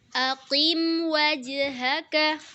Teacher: kita cukup menyebut mim dengan sempurna lalu menyebut huruf setelahnya tidak perlu kita gunahkan tidak perlu kita tahan huruf mimnya kita ee tidak perlu baca seperti aqim wa tapi harus langsung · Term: izhar syafawi